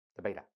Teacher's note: the friction happened between your lips because it is very narrow. The channel is very narrow. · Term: bilabial